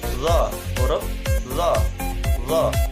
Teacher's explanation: Selanjutnya, punggung ujung lidah dan ujung dua gigi seri yang atas. Sifatnya nafas ditahan atau jahar, lunak, dan suara tidak tertahan atau rohoa. Pangkal lidah naik ke atas langit-langit atau isti'la.